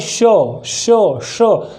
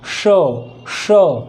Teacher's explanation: हमारा जो टंग है ये टच करेगा किसको? Middle part of upper jaw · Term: SH